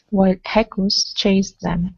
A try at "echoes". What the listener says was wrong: Okay, take off that H instead of echoes. Echoes.